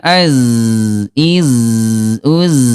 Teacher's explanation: Huruf zai dia lemah ya bunda, mengalir az, iz, uz, lemah ya.